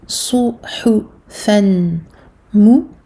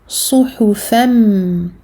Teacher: On fait disparaître une fatha. On fusionne ici le noun du tanwin avec le mim. Au lieu de dire suhufan mu, je dirais plutôt suhufam directement vers le mim. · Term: idgham bi runna